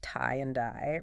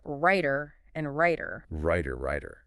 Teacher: So in that specific position between vowels before an unstressed one, the underlying difference, the contrast between T and D is neutralized. They sound the same on the surface.